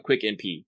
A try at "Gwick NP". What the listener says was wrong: did you pronounce that correctly? I don't know if you said Gwick NP. Because that's how it's written with the G. Gwick.